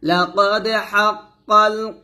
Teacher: লাকাদ দাল এখানে কলকলা করবেন লাকাদ হাক্কাল হাক্কাল বলবেন না অনেকে আমরা হাক্কাল বলি এটা না